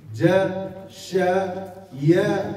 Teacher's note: وحروف وسط اللسان وهي الجيم والشين والياء لا يستعلي بها إلا وسط اللسان. فلم تعد هذه الأربعة من المستعلية وإن وجد استعلاء في اللسان.